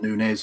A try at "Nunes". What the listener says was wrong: There's no Y. But he doesn't have the little squiggly thing. It doesn't have the squiggly thing.